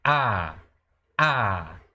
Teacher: Ele representa a vogal A, mas é como se esse A tivesse um acento agudo. É um A um pouco mais forte e um A alongado. A, ok? Lembrando que esse A aqui, a pronúncia original desse kametz, é como se fosse A-O, ao, como se fosse ao.